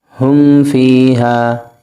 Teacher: یہاں میم ساکن کے بعد فا آ گیا تو ہم یہاں غنہ نہیں کریں گے۔ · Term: اظہار شفوی